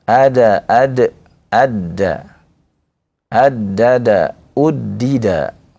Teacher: Kalau dal dari ujung lidah ya. Sedangkan d itu dari hmm dari pangkal lidah ya. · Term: huruf dal